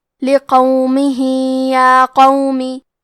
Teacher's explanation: یہاں حکم ہے مد صلہ صغرا تو ہم اپنی آواز 2 مد کے برابر لمبی کریں گے